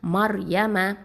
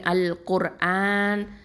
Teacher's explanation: இந்த ரா வந்து தஃப்ஹீமாக தான் ஓதணும்